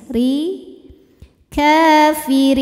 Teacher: Kaf panjang dua harakat kafirin huruf Dho dibunyikan secara tarqik karena ro berharakat kasrah maka ro tipis ya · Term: tarqiq